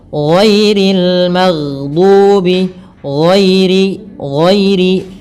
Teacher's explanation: ada bacaan lin yaitu adanya fathah bertemu dengan huruf ya sukun. Kemudian pelafal ri rinya tipis ghairil magdubi magdubi.